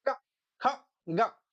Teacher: जीव के मूल भाग से इनका उच्चारण किया जाता है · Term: नुक्ता